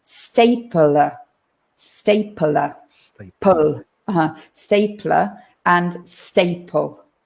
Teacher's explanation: now it's a little bit it sounds a bit strange because between the p and the l we have that schwa sound we kind of put another vowel in there